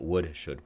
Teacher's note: Would, we don't say would, should, but would, should, we drop the L sound.